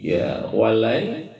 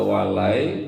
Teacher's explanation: Karena nun mati ketemu ya, maka hukum bacanya adalah idgham bi gunnah. Ya, idgham artinya memasukkan nun mati ke dalam huruf iya, kemudian dibaca gunnah dengung.